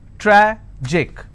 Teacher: Tragic, tragic, I will stress on tra.